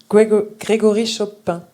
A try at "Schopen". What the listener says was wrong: It's P-E-N, not I-N. Chopin is S-C-S-C-H-O-P-E-N.